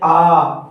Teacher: सबसे अधिक मुख खुलता है उसे विवृत स्वर कहते हैं। जैसे कहते हैं आ।